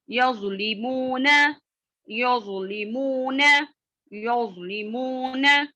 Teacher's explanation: जौ की आवाज मोटी और नर्म होती है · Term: तफखीम लेटर